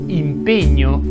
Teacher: impegno si pronuncia con la e chiusa